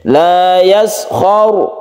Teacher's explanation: yashr di sini yang kita perlu perhatikan yaitu sukun rak ini sukun rak kalau sebelumnya ada fathah maka roknya itu dibaca tebal dibaca tebal berarti disebut tafkhim laa yashar jadi tebalkan roknya ini